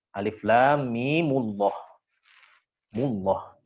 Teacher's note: Allahnya jadi tebal, tapi nanti mimnya seolah-olah ada waw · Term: dhammah